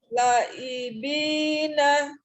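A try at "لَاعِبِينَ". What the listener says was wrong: Lanya dua harokat. sekron ya, lebih diperhatikan lagi untuk panjang pendeknya. Hati-hati di huruf awal yang harokat pendek tidak perlu diayun ya. dibacanya harus sama-sama pendek ketika dia pendek semua ya.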